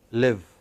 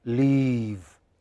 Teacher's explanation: some vowels are very short live and the others are very long leave your lips have to spread